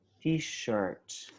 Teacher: the stress is in shirt and it's sh, t-shirt